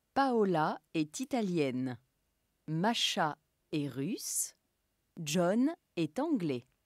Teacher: every time at the end, the last vowel of the rhythm group, the tone goes up, okay? And then there's a small break. And for the very last one, the tone goes down. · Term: groupes rythmiques